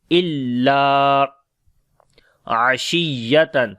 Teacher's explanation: Ain we read from the middle of the throat. On the ya we make nabar, like when ya and waw comes with shadda sign, we make nabar there.